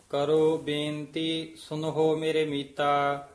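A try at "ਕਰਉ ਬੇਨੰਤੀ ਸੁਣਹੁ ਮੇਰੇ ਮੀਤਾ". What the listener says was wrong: मेरे ऐ नहीं कहना, मेरे मीता।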